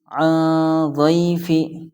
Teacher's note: زبر ضی، عن ضی، فا زیر فی، عن ضیفی، یہاں پر نون ساکن کے بعد حروف اخفا میں سے ضاد آیا ہے، اس لیے یہاں پر ناک میں آواز جائے گی